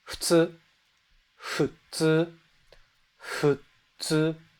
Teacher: You're kind of combining H and F, right?